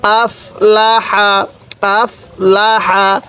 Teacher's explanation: এই হাটা উচ্চারণের সময় মুখ দিয়ে হালকা বাতাস বের করলে এই হাটা সহি উচ্চারণ হবে